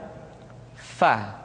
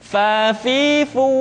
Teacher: Berikutnya, pengucapan huruf Fa. Diucapkan dengan menyentuhkan ujung dua gigi seri kita bagian atas dengan bibir bawah bagian dalam. Fa. Seperti kita mengucapkan huruf F di dalam huruf Latin.